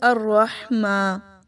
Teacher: را موٹا پڑھا جائے گا، زبان کی سائڈز کو اوپر دانتوں کے ساتھ لگا کر، ہا کی آواز حلق سے نکلے گی، گلے کے مڈ سے، ہا۔